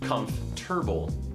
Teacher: The T switches places with the R sound, or the sound as it's pronounced in the word, and it ends up being, instead of comfortable, comfortable. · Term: metathesis